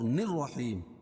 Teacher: را کے اوپر تشدید ہے اور نون کو را میں ملائیں گے، لام نہیں پڑھی جائے گی۔ نررحیم، اور یا ساکن سے پہلے ہا کے نیچے زیر ہے تو یہ مدہ، اس کو ایک الف کے برابر کھینچ کے پڑھیں گے، اور وقف کی صورت میں یہ مد عارض وقف نہیں ہوگا۔ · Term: حروف شمسی